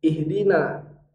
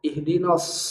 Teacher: Sampai bunyi na itu harus keluar dari rahang tipis. Tidak boleh berubah na-nya jadi tebal. Karena sering sekali na ini dibaca agak tebal.